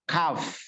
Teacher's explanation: Jadi kaf itu kita keluarkan bunyinya dari belakang, dari bawah persis anak tekak, kaf. Nah, sekarang yang di atas lidah.